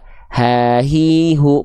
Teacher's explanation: H besar mah di sini di pangkal tenggorokan tepatnya pada bagian ee organ pita suara.